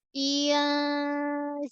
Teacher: Nun mati jumpa sin. Ada ikhfa. Ikhfa hakiki. So samarkan nun.